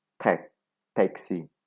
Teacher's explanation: the air that comes out from the lung is completely blocked by the tip of the tongue, which is in tight contact with the alveolar ridge